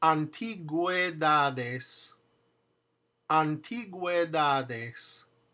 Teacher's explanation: The one underneath it with the two little dots is gue. The two little dots means you pronounce the U. So it's actually a blend of two vowels.